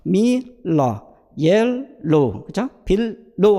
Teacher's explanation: 온셋일 때는 non-velarized, 즉 클리어 L이나 라이트 L, 브라이트 L 사운드로 가볍게 소리가 난다는 거예요